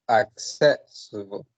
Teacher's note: Okay, so the first one is accessible, and I count 4 syllables, and I think that the stress is in the second